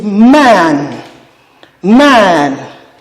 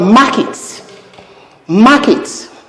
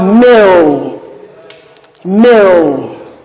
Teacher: So this bilabial nasal begins this word man. · we refer to this sound as a bilabial nasal because the two lips are pressed together in producing it. The upper lip is pressed against the lower one for it to be articulated, as we have in m.